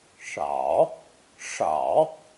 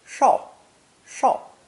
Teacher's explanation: In modern Chinese, however, they've been differentiated, this new version being pronounced either third tone, shao, shao, or fourth tone, shao, shao